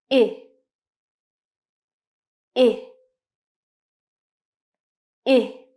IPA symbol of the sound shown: ɪ